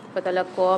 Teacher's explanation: قاف کے اوپر کھڑا زبر بھی، مشدد بھی اور مد بھی آ رہا ہے، تو یہاں پر اس کو ہم سختی جماؤں کے ساتھ بھی پڑھیں گے اور 4 الف کی مقدار کھینچ کے بھی پڑھیں گے۔